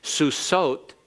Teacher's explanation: It's that characteristically long vowel of the feminine plural ending, the ot ending.